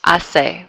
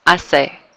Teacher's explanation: We're just dropping that H sound.